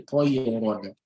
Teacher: So your Ra will be pronounced heavily with a heavy mouth and with a round mouth, right? And so we call it closed mouth pronunciation or a round mouth pronunciation. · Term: At-Tafkheem